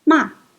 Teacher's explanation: The fourth tone, falling tone